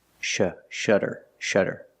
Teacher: It has a double T, but it makes the same sound, the fast D sound.